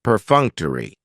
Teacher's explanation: Perfunctory has 4 syllables, and the stress is on that second syllable, perfunctory. That third syllable has the schwa, and it's going to end with that long E sound